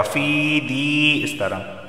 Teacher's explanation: وغرہم فی دینہم، فا یا زیر فی ایک الف کے برابر اسے کھینچ کر پڑھا جائے گا، دال یا زیر دی اسے بھی ایک الف کے برابر کھینچ کر پڑھا جائے گا